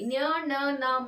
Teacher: ಇನ್ನ ನಾಲ್ಕನೇ option D ನ್ ನ ಣ ನ ಮ ಇದೆಯಲ್ಲ ಇದು ಮೂಗಿನ ಸಹಾಯದಿಂದ ಉಚ್ಚಾರ ಮಾಡ್ತಕ್ಕಂತಹ ಅಕ್ಷರಗಳು ಹಾಗಾಗಿ ಅನುನಾಸಿಕ ಅಕ್ಷರಗಳಾಗುತ್ತೆ